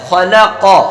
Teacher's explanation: پہلا خا موٹا، لاسٹ کا قاف موٹا اور لام باریک